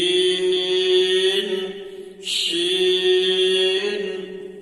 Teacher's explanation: মোটা করে জিবের মাঝখান উপরে তালুতে লাগবে বলেনশি সাপ যেমন ফুস করে ওঠে তেমনভাবে একটা আওয়াজ আসছে দেখেনশি